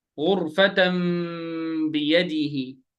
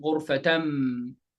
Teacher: change the sound of noon, sakin, or tanween sound to a hidden meme sound by making the lips completely closed without pressure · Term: Iqlab